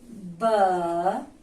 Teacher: با دونوں ہونٹوں کے ملانے سے یعنی تری والا حصہ آپس میں ملے گا تو یہاں سے با. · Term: حروف شفویہ